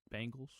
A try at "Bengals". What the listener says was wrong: You love to say Bengals. You love to say Bengals. No, definitely not the right way. You love to say Bengals. They're not the Bengals. They're the Bengals. It's like there's no A involved. The Bengals.